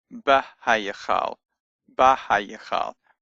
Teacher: But the hay has been absorbed, if you like, but the bet now has a patach under it. It has a long ah sound instead of a short eh sound from the vocal shiva that it normally would have. That's because the hay has got absorbed.